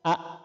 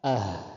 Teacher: Nah, di dalam pita suara itu ada dua huruf, yaitu hamzah dan ha. Bedanya adalah ketika hamzah itu pita suara ditutup, kemudian ketika ha pita suara dibuka. Misalkan kalau hamzah a, kemudian kalau ha ah.